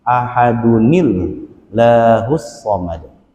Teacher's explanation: Ya, karena nun sukun kalau dia diharokatkan, maka harokatkan dengan kasroh. Karena kasroh, maka lafzul jalalahnya jadi tarqiq atau tipis.